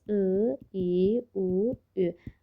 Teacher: Və bu ağız boşluğunu iki formada təsəvvür eləyəcəm sizə. Burada bizim çənəmiz qapalıdır. Aşağıya doğru enməyibdir. Bu zaman çıxan saitlərə biz qapalı saitlər deyirik. Və ağız boşluğumuz yumludur axı.